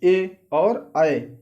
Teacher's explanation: इनका उच्चारण स्थान क्या होता है, कंठ और तालु दोनों के माध्यम, कंठ तालु।